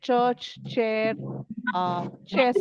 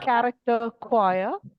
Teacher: So if you look at church, chair, chest, these are all ch sounds for CH. But if you look at character, choir, these are all k sounds.